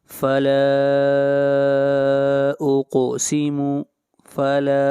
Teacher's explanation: لام کو کھینچ کر پڑھیں گے، لام کے اوپر جو مد ہے اس مد کو مد منفصل کہتے ہیں